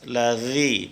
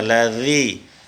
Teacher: Ladzi kita lihat makhraj huruf zal, makhraj huruf zal, ujung lidah menempel ke bawah 2 gigi seri atas